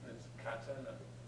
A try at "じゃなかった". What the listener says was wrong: Janakatta. Katta. Yeah, it's got a small tsu in it. So, janakatta.